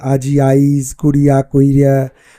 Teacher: এখানে অপিনিহিতির প্রচুর প্রয়োগ লক্ষ্য করা যায়